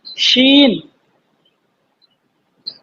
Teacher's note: ये जुबान का हमारा बीच का हिस्सा जो है, ये तालू से मिलाएंगे ऊपर